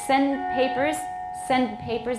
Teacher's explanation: the d often is not audible but your tongue may be there making the d